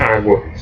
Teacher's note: Por isso que o nome é ditongo crescente. Primeiro o som fraco, depois o som forte. Como o som aumenta, ele é crescente. · ele é oral porque a gente fala mais pela boca do que pelo nariz. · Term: ditongo oral